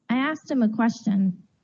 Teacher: notice how i deleted the h in him for connected speech